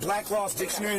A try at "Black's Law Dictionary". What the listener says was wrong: Okay, first of all, for future reference, it's Black's Law Dictionary, not Black Laws.